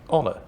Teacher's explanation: you don't pronounce the h at the beginning of honor